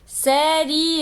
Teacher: Série E, o E tá mais forte. Então, a semivogal é o I.